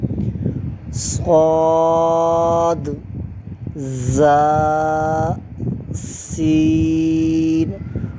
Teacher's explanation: لثویہ زبان کا سرہ اور اوپر کے دانتوں کے اندرونی کنارے سے ادا ہوتے ہیں، صاد، زا، سین